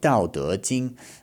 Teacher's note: let my second tone ring out for a bit longer